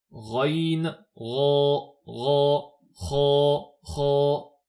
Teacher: Enfin pour adna al-halq, donc l'entrée de la gorge, c'est l'endroit le plus proche des lèvres ou des dents, et de cet endroit sont prononcées les lettres raïn et kha, raïn, ra, ra, kha, kha. Donc ces deux lettres-là sont prononcées par la gorge au niveau de la glotte